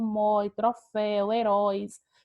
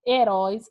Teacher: Heróis é uma palavra oxítona. A última sílaba é a sílaba mais forte da palavra.